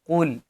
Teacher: قاف کو مفخم یعنی موٹا پڑھیں گے۔ لیٹر قاف ول بی ریڈ ہیوی، کیونکہ یہ حروف مستعلیہ میں سے ہے۔